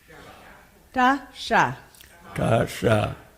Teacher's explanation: The second one, the easiest way to find it is to take your tongue back and do ta, and in the same place make sha. Ta, sha.